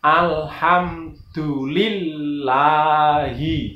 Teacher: Hi itu ha itu di pangkal tenggorokan atau abot atau besar itu, tebal. Lillahi tidak boleh tipis.